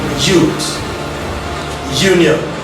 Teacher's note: the front part of the tongue is usually raised towards our hard palate to the position slightly higher than it takes to pronounce the E sound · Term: Ya sound